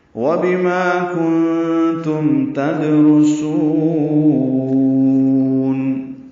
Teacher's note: تدرسون میں دال ساکن پہ قلقلہ ہے، را پر پڑھیں گے، سین کو باریک پڑھیں گے، لمبا کریں گے، وقفاً مد عارض للسکون ہے